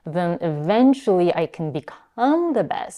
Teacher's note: she's aspirating on the k, which is one of our voiceless stops.